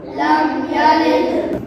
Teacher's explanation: मीम साकिन के बाद यहाँ या आ रहा है तो यहाँ इज़हार शफ़वी होगा, यानी गुन्ना नहीं करेंगे।